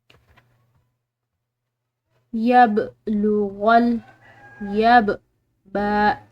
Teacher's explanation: बा ये हरूफ कलकला में से है तो इसको हमने हिलाते हुए अदा करना है।